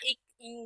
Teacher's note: நாவின் முதல் அன்னத்தின் அடி